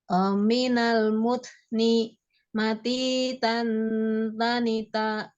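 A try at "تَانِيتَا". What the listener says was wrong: Tanya panjang ya, 2 harokat. Mati tanita.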